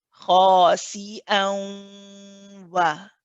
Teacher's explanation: the wa bit shouldn't have any sound through the nose